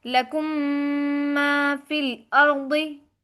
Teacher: मीम साकिन के बाद अगर दूसरी मीम में आ जाए तो इदगाम होगा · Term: मीम साकिन का इदगाम